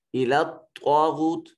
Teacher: طا کو جو ہے یہ مفخم موٹا اور پر کر کے پڑھا جائے گا · خالی از حرکت ہے ما قبل مفتوح ہے، الف مدہ ہے، غو میں غائن جو ہے یہ بھی مفخم ادا ہوگا ، حرف مستعلیہ ہے، واو ساکن ما قبل مضموم واو مدہ